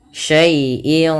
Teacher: Ada bacaan ikhfa hakiki yang di mana suara tanwin pada lafal in disamarkan ke huruf qof. Yang mana qaf termasuk huruf ikhfa. · suara tanwin pada lafal in disamarkan ke huruf qaf, yang mana qaf termasuk huruf ikhfa. Maka cara membacanya syai'in qa, seakan-akan langsung kepada makhraj daripada huruf qaf.